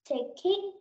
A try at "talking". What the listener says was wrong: Cái từ này mình đọc là talking. Talking. Không phải take đi nhé.